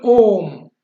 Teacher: प्लुप्त में तिगुना टाइम लगता है